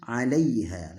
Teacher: perhatikan ketika membaca lin maka tidak boleh dilama-lamakan linnya, tapi langsung 'alaiha karena lin ini cepat, lebih cepat daripada yang lainnya, maka bacanya 'alaiha.